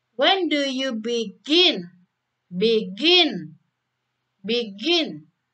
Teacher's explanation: B itu lebih rendah, gin itu lebih tinggi. Jadi rendah dulu baru tinggi ya. Karena yang ditekankan adalah yang second syllable.